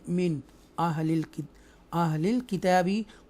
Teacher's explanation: यहाँ इजहार करेंगे आफ्टर नून साकिना, आप देख सकते हैं हमज़ा आ रहा है जो कि हुरूफ़ हल्किया में से है, थ्रोटल लेटर में से है, तो नून का साउंड जो क्लियर पढ़ेंगे